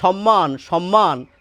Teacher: প্রমিত বাংলা যেটিকে আমরা কলকাতার উচ্চারণ বলি সেখানে কিন্তু এই দন্তস এর উচ্চারণ তালব্য স এর মত হবে। অর্থাৎ এই যে আমি বলছি সম্মান সম্মান স সে স হচ্ছে এই স। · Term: প্রমিত উচ্চারণ